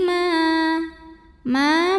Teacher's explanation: karena ada Alif didahului baris fathah maka cara bacanya dipanjangkan mimnya dua harakat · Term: Mad Thobi'i doohiri